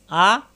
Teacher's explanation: আইন কন্ঠের মাঝখানে চাপ সৃষ্টি হবে